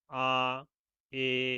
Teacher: তারপরে দেখো নিম্ন স্বরধ্বনি, জিহ্ব সবচেয়ে নিচে অবস্থান করে এসব স্বরধ্বনি উচ্চারণের সময়